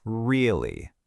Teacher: what if I let the pitch fall? Really? Suddenly, it's dripping with skepticism